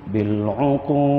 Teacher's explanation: Bil uqud, kalau kita berhenti pada jim itu, dia jadi mad arid lis sukun, boleh baca 2 atau 4 atau 6 harakat. Dan berhenti pada dal, dia qalqalah kubra, ada detakan lantunan huruf itu